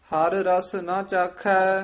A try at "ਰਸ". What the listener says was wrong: ਰਸ ਕਸ ਕੇ ਨਹੀਂ ਬੋਲਣਾ। ਹਰ ਰਸ ਨਾ ਚਾਖੈ।